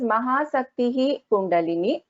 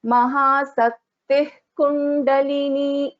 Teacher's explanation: Then a Visarga is followed by Ka or Kha. Then it is replaced by another letter called Jihwa Muliya.